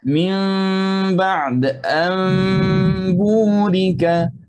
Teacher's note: Al-hukum al-thalith atau hukum yang ketiga, al-iqlab. Apabila nun bertemu dengan ba, akan kita terbalikkan nun menjadikan mim dan kita sembunyikan akan ikhfa syafawi seperti yang kita belajar tadi.